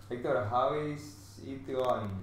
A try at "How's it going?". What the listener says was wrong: No, pero más rápido, tío. How's it? How's it? Escucho how is. How is. Pero no. How's.